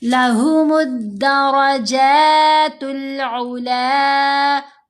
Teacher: लहुमुद्दरजातुल उला, ऊला नहीं करना, आइन की आवाज़ बिल्कुल छोटी है, लाम को लंबा करेंगे